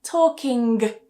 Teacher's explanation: you may hear some speakers saying talking and still saying it like a g